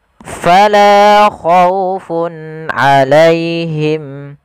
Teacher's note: Kemudian fun alaihim dhammatain bertemu dengan huruf ain, maka di sini kita baca dengan bacaan ishar memperjelaskan suara tanwinnya.